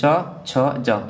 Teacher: चा वर्ग जो होता है पूरा का पूरा कैसे होता है, तालु से बोला जाता है। यानी च छ ज ये सब कैसे बोले जाते हैं, तालु से बोले जाते हैं